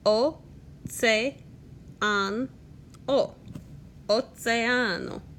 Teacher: Also notice that Oceano, I pronounce the E and the A. Every vowel gets its own syllable.